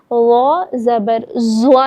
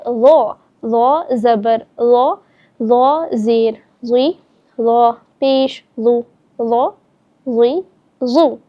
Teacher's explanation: اب یہاں پر بھی ہم دیکھیں گے ضو جو ہے وہ حروف مستعلیہ میں بھی آتا ہے اور نرمی سے پڑھے جانے والے حروف میں آتا ہے، تو اس کو ہم سختی سے نہیں ادا کریں گے بلکہ نرمی سے پڑھیں گے اور ساتھ ہی پر یعنی موٹا کر کے بھی پڑھیں گے